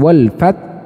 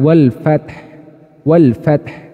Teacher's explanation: di sini teman-teman tuh jadi di bagian tengah tenggorokan dan sifatnya dia memiliki sifat Hamas nafasnya mengalir ya kemudian suaranya juga mengalir kedua-duanya mengalir tidak ada yang tertahan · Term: hak sukun